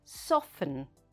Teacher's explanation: we write soften like this s o f t e n however in everyday english we say soften no t sound